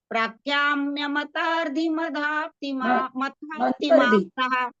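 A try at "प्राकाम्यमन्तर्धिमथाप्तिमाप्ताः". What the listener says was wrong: प्राकाम्य मंत्र, प्राकाम्य मंतरधि है ना, मंत्र आगे मंतरधि। मंतरधि नहीं है, मंतरधि है, म के बाद न है, मंतरधि।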